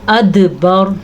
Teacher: پھر سے را کو پر پڑھیں گے اور دال کے اوپر قلقلہ کرنا ہے